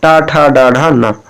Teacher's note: और मूर्धन्य टा वर्ग आता है, टा, ठा, डा, ढा, ना।